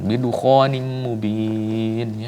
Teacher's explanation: idgham bi gunnah, dimasukkan ke dalam huruf mim dengan gunnah, ya. Gunnah itu adalah dengung.